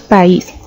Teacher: la pronunciamos en dos sonidos o golpes de voz por separado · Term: hiato